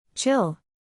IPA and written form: tʃɪl (Chill)